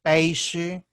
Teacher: a evolução a quase todas as línguas ibero-românicas foi o som sh, peixe, como em língua portuguesa